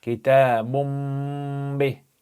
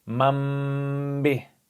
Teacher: it's called iqlab because you transform the letter from ba to mim